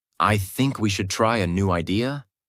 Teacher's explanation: One of the biggest mistakes learners make is something called rising intonation. This means your voice goes up at the end of the sentence, as if you're asking a question, even when you're not.